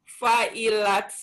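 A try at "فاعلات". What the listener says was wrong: Kurang panjang, Bu. Fa'ilat.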